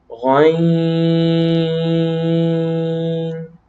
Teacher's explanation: یہ حلق کے اوپر والے حصے سے ادا ہوگا.